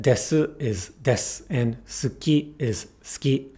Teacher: the high vowels I and U get devoiced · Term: devoicing